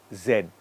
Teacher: when I'm saying Z it should not be quiet there has to be some vibration some movement